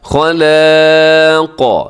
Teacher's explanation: اب اس سے کیا ہوتا ہے کہ اکثر خلاق ایسے لام بھی ساتھ موٹا ہو جاتا ہے، تو لام کو موٹا ہونے سے بچائیے گا